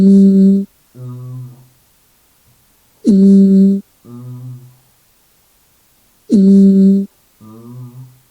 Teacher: That's voice, right? The velopharyngeal port is open, allowing the acoustic energy and airflow to pass through the nose. · The consonant M is a voice sound and it is nasal too.